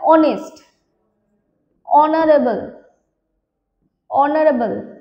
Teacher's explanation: আমরা উচ্চারণ দেখো এইচ গুলোকে সাইলেন্ট রাখছি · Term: এইচ সাইলেন্ট